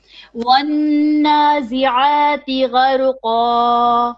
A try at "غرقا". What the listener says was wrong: Even your ghain, make it more heavy. Gharqa.